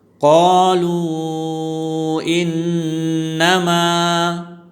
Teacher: جب حروف مدہ کے بعد حمزہ دوسرے کلمے میں آ جائے، تو یہاں واو مدہ ہے، وہ ساکن سے پہلے پیش آیا ہے، تو یہ واو مدہ ہے، وہ مدہ کے بعد حمزہ دوسرے کلمے میں آیا ہے، تو اس کو مد منفصل کہتے ہیں۔ مد منفصل، اس کو 3 الف کی مقدار یا 3 سیکنڈ کی مقدار کھینچ کر پڑھیں گے۔ قالوا انما، انما میں نون مشدد ہے، یہاں غنہ ہوگا، اور ما میں الف مدہ ہے، مد اصلی، اس کو بھی ایک الف کی مقدار کھینچ کر پڑھیں گے۔